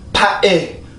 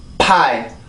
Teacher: 만약에 두 번 긴장을 하면 파에 이렇게 했겠지만 한 번만 긴장을 시키면 파이 이렇게 발음을 해주게 되죠.